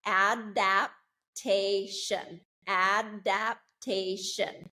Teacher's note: The stress is on the third syllable